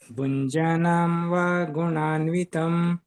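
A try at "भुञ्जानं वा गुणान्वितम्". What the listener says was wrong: ಪ್ರಭುಜಿ ಭುಂಜಾನಂ ಜಾ ದೀರ್ಘ ಇದೆ. ಭುಂಜಾನಂ ವಾ ಗುಣಾನ್ವಿತಂ.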